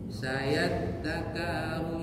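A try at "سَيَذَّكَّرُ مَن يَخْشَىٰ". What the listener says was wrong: Iya, siddahnya di dal dan kaf.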